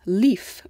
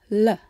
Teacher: The English L, for example, can be different depending on where it occurs in the word. At the beginning of a word like leaf, we use a light L, made with the tip of the tongue